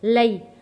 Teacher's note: زبر وا، حمزہ زیر ای و ای، لام یا زبر لئی، یا ساکن ہے، یا ساکن سے پہلے زبر ہے اس لیے ہم اس کو جلدی اور نرمی کے ساتھ پڑھیں گے کیونکہ یہ حروف لین بن جاتا ہے۔ لئی